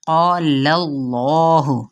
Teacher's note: ये इसमें जलाला जो है वो पुर पढ़ा जाएगा क्योंकि पीछे ज़बर है।